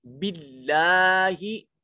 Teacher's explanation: इसमें जलालत की लाम को बरीक पढ़ा जाएगा और इसके ऊपर मौजूद अलिफ अलमदिया अस्सगीरा है, इसको एक अलिफ के बराबर लंबा करेंगे।